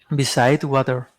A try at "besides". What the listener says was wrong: Let me hear the S. Besides.